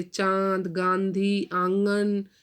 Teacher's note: हमारी नाक से भी आवाज़ निकली और हमारे गले से भी आवाज निकल रही है · अनुनासिक इनका उच्चारण नाक और गले दोनों से होता है